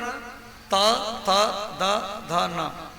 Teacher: दंत वर्ण त थ द ध न, जो जीव दांत में टकराएगी, जीव जो दांत में टकराएगी तो ये 5 अक्षर की उत्पत्ति होगा